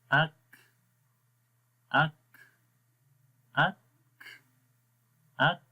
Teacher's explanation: اور دونوں جو صفتیں ہیں ان صفتوں کو پڑھیں گے کیسے، سب سے پہلے شدت جو ہے وہ صفت پڑھیں گے، یعنی آواز بند ہوگی، اک، شدت کی صفت پہلے آئے گی، اس کے بعد ہمس کی صفت آئے گی، اور ہمس کی صفت دباؤ کو ختم کرنے کے لیے آئے گی